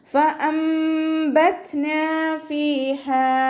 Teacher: നൂൻ സാക്കിനയെ മീമാക്കി മാറ്റിമറിച്ച് ഒന്നയോടുകൂടി ഒതുക്കിക്കൊടുക്കുക കേട്ടോ. താക്ക് സുക്കൂനാവുമ്പോൾ കുറച്ച് air pass ചെയ്യണ സൗണ്ട് കൊടുത്തിട്ട് ഉച്ചരിക്കുക · ഹാഇൻ്റെ കൂടെ അലിഫ് മദ്ദ് വന്നു, അവിടെയും 2 കൗണ്ട് നീട്ടിക്കൊടുക്കുക